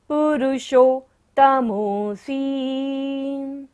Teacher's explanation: मूर्धन्य श है पुरुषोत्तम में, तो मूर्धा से हमें इसका उच्चारण करना है